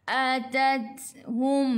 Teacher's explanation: Ta pun sifatnya sama macam huruf kaf, sifatnya hamas, kena ada angin. Jadi sedikit sahaja, jangan banyak.